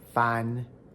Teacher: The tongue root and the body sit higher and further forward in the oral cavity. This creates a slightly brighter overall acoustic quality. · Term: Mandarin articulatory setting